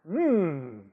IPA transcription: m